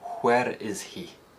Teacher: There's no H dropping in Scottish English, and the sound is often used in words that begin WH. So a phrase like, where is he, in Scotland is likely to be pronounced, where is he?